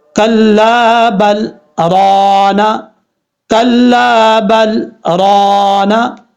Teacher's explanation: اب یہاں پر بل پہ میں رکا ہوں لیکن میں نے یہاں پہ سانس نہیں توڑا، صرف میں نے سکتہ کیا ہے